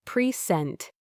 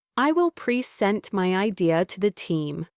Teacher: Present, stress on the second syllable, as a verb, meaning to give something or to introduce.